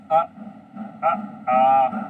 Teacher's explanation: कंठ को टच करती है। तो हमारी जो आ की ध्वनि है वो कंठ से निकलना शुरू होती है। · जब हम सिर्फ आ बोले आ तो हमारा कंठ हिलता है।